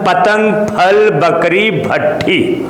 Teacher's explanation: यानी बोल रहे हैं आप जब पतंग, फल, बकरी, भट्ठी, तो एक ओट दूसरे ओट को स्पर्श कर रहा है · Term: ओष्ठ